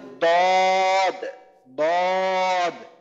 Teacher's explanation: জিহ্বার গোড়ার কিনারা বা জিহ্বার কিনারা উপরের মাড়ির দাঁতের উপরে যে মাড়ি বা চাপার দাঁতগুলো আছে এগুলার গোড়ার সঙ্গে লাগায় উচ্চারণ হবে